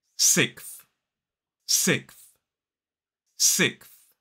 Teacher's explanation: what a lot of native speakers actually do is drop that s sound. · Ending in that unvoiced th sound. Sixth. 1 syllable.